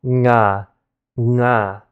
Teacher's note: ng also happens to be at the same area of pronunciation in your mouth as k, in the back of your mouth